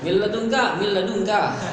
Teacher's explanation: Dan memang tidak ada yang tersisa dari nun, tidak ada gunanya di sana dia.